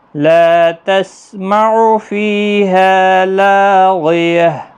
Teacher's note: فی جنت عالیہ لا تسمع فیہا لاغیہ، لا الف مدہ ہے، باقی کسی بھی حرکت والے حرف کو کھینچنا نہیں، فی یا مدہ ہے، ہا الف مدہ ہے، لا الف مدہ ہے، تینوں کو ایک ایک الف کی مقدار کے برابر کھینچیں، اور جس پر زبر زیر پیش ہے تو اس کو مت کھینچیں، اور ہا ساکن پڑھا جائے گا یہاں پر بھی وقف کی صورت میں۔